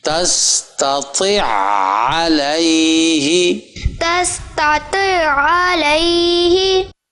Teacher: پہلی عین تستطیع کی وہ علیہ کی عین میں مدغم ہے، اس کے اوپر آواز جا کے ٹکے گی